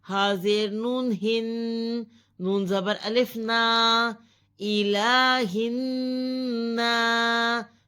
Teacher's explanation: نون مشدد پر غنہ کیا جائے گا